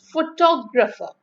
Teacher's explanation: Just as you have a word like photo, and then it's photograph, but it's photographer. So the stress has moved towards graph.